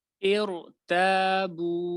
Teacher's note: را کو یہاں پہ موٹا کیا جائے گا حتیٰ کہ اس سے پہلے زیر ہے، وہ اس وجہ سے کہ یہ جو زیر ہے یہ اصلی نہیں بلکہ عارضی ہے.